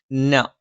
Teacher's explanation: നാവിന്റെ അറ്റം മേലെ മുൻപല്ലിന്റെ മോണയിൽ